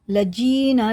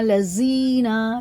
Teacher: زال کو باریک پڑھیں گے